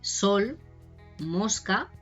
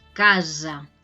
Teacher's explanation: Tiene el sonido típico, sol, mosca, que sería lo que nosotros llamamos el sonido de la S sorda, pero también cuando está entre vocales tiene un sonido parecido a la Z en catalán, claro. Un sonido sonoro, casa, ¿no?